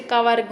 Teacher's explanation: का वर्ग क्या होता है? कंठ से निकलता है तो कंठ वर्ग होगा।